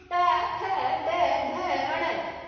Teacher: ये 5 वर्ण हैं जो ट्वर्ग है, इनका उच्चारण मूर्धा से होता है। ये कठोर व्यंजन भी कहलाते हैं।